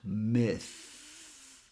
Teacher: Here we use the unvoiced version of the TH. So just bring your tongue a bit out and slightly touch your upper teeth, but not too hard.